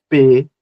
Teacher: P vai encontrar ali o os lábios fechados para produzir essa explosão e o som de P